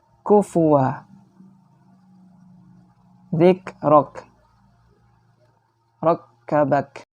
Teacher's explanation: huruf kaf, yaitu pangkal lidah dengan langit-langit bagian yang keras